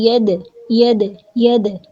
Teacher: دال کی جو آواز ہے پلٹ کے آئے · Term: قلقلہ